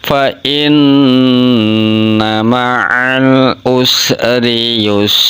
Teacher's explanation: sin kecil berharokat, sukun atau sinnya mati, jadi huruf sinnya keluar angin, hukum bacanya itu hamas